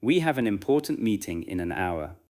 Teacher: Notice the consonant to vowel links in have an and in an.